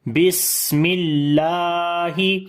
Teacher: اللہ کے نام سے پہلے زیر ہے، باریک پڑھیں گے بسم اللہ، اور لام کو لمبا بھی کریں گے، کھڑی زبر ہے اس کے اوپر بس۔